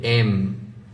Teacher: এম বলার সময় দুইটা ঠোঁট মিশবে